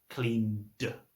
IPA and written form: kliːnd (cleaned)